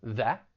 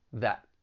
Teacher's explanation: If I say it without the T, that, and with the stop T, that. When I say it now, I'm going to say it without the T.